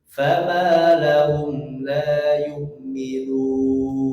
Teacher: ketika mad itu dia tidak boleh ada yang masuk ke hidung, kecuali ketika nun akhirnya masuk ke hidung